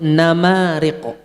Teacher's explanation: kalau kita tutup hidung nggak mungkin nyebut namariq, ya kan? Artinya ada gunnah asli di situ.